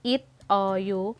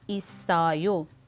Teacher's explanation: So ang patchim na sangshiyut plus ang kasunod na syllable which is o, a vowel sound, ay magiging kadugtong siya. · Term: connecting sound